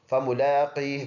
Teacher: جب وقف کریں گے تو یہ ہا سائلنٹ، اس کا زیر سائلنٹ کریں گے، فملاقی بن جائے گا.